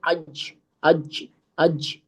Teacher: बीच का जो जुबान का वो होता है ना हिस्सा उसको ऊपर के तालू पर लगाने से जीम का मखरज चल रहा होता है